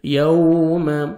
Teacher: یوم اس طرح یہاں پہ بھی ان یومل، یومل نہیں پڑھنا، ٹھیک ہے. یوم ہونٹ کو گول کریں گے، لپس کو راؤنڈ میں لے کے جائیں گے، واو اچھی طرح ادا ہوگی.